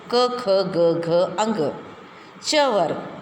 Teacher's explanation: हम बोले हैं तो सिर्फ ये कंठ से ही वो आवाज़ निकलती, कंठ यानी गले से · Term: क वर्ग